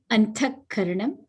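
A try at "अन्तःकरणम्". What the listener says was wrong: Antakharanam, yes.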